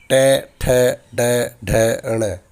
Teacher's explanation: इन सभी वर्णों का उच्चारण जिह्वा की सहायता से मूर्धा से किया जाता है। मूर्धा जो हमारे मुंह का पूरा खोखला भाग है, उसे मूर्धा कहा जाता है।